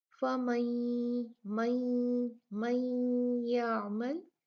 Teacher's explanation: اور کیا ہے یہاں پر دیکھیں، یہاں پر فَمَن يَعْمَلْ، فَمَن يَعْمَلْ، نون ساکن اس کے بعد یا آیا تو یہاں نون ساکن کا ادغام کیا جائے گا. نون کو یا میں مدغم کر دیا جائے گا، ملا دیا جائے گا